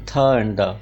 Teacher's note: Tip of द tongue, it's playing active role in producing द sound थ एंड द. तो ये active articulator हुआ.